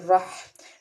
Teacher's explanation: ہا کو درمیان حصے سے ادا کریں گے حلق سے اور میم کے اوپر کھڑا زبر ہے ایک الف کے برابر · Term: حرف حلقی